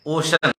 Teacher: ओशियन नहीं पढ़ेंगे, ओशन, EAN। सी के बाद ई आया है, उच्चारण तालव्य स हो गया है